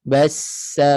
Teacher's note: bunyi macam ular jangan putuskan suara · Terus masuk pada sin kuat dan mengalir. Bassa bunyi macam ular.